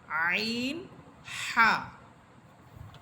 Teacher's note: হলকের মধ্যখান হইতে দুইটি হরফ উচ্চারিত হয় একটি হচ্ছে হা আরেকটি হচ্ছে আইন · হলকের মধ্যখান হইতে দুটি হরফ উচ্চারিত হয়, একটি হচ্ছে হা, আরেকটি হচ্ছে আইন। হলকের মধ্যখান হচ্ছে আমরা হা করলে মুখের ভিতরে যে ছোট্ট একটি জিহ্বা দেখা যায়, ওই জিহ্বাটা যে স্থানে থাকে ওই স্থানকে হলকের মধ্যখান বা কণ্ঠনালীর মধ্যখান বলা হয়।